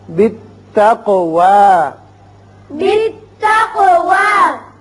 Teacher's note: آپ واو پر کھڑا زبر ہے ایک الف سے زیادہ آواز نہیں کھینچنی